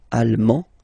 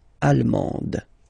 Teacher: you don't pronounce the final D, but then you pronounce it here for the feminine form.